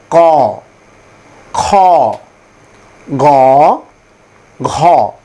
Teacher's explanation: এই ধ্বনিগুলো সরাসরি কন্ঠ থেকে উচ্চারণ হয় বলে এগুলোকে কন্ঠ ধ্বনি বলা হয়। এবং এর উচ্চারণের স্থান কন্ঠ।